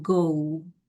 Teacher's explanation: Kalau American English lebih cenderung menggunakan diphthong O. Jadi kalau dalam versi aksen Britishnya ini go, kalau Amerikannya go.